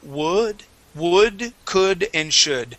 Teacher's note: first off um the word would could and should all right instead of using an o sound it is an uh